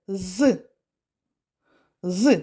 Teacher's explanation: горло працює то звук з дзвінкий